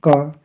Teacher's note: क का उच्चारण स्थान क्या है आपका कंठ